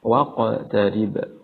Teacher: qaf yang disukunkan dan dibaca memantul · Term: qalqalah